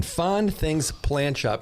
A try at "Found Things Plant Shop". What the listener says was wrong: It's Fond or Found? You're saying Fond.